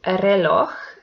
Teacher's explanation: it belongs to agudas because the last syllable is the stressed one. And this word ends in j, which is a consonant, and doesn't have an accent mark.